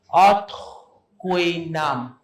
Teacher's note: People would probably say Othuin, but it's that with the glottal H.